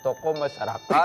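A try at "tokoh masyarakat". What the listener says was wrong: Ini toko. Toko. Gak ada haknya.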